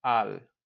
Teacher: So instead of a el, when we see that for to the, same as we had a la means to the, a el, we're going to combine that to al, to one word. So we eliminate the e and we smush that l together and we say al, which is like a el, but we just squeeze it together.